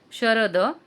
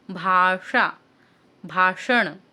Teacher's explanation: षटकोनातला श ज्याला आपण पोटफोड्या श असं सुद्धा म्हणतात मराठीमध्ये, तर त्याचा उच्चार जरा ट्विस्ट, म्हणजे जीभ तुमची ट्विस्ट होते ट सारखी. फॉर एक्झाम्पल ते बोललं जातं भाषा.